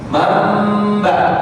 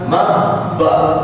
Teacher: ketika nun bertemu ba sudah bersuara mim. Maksudnya muncullah suara mim. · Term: iqlab